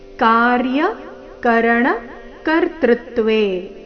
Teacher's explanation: ಮೊದಲನೇ ಚರಣದಲ್ಲಿ ಒಂದೇ ಒಂದು ಆಘಾತ, ಅದು ಕರ್ತೃತ್ವೇ ನಲ್ಲಿ ತೃ ಮೇಲೆ